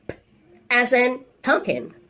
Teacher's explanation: This is a voiceless sound. It's a bilabial sound. And it's a stopped sound.